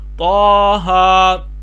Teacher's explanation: یہ کھڑا زبر ہے، اس کو تھوڑا سا لمبا کر کے پڑھنا ہوتا ہے۔ کھڑا زبر آ جائے، زیادہ لمبا بھی نہیں، بہت زیادہ لوگ کھینچتے ہیں، زیادہ لمبا نہیں کھینچنا چاہیے۔